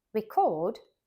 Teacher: but a verb record stressed on the second syllable · record, stressed on the second syllable, means to capture sound or performance on a device.